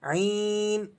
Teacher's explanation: یا مدہ ہے، آپ اسے ایک الف تک کھینچ کر پڑھیں گے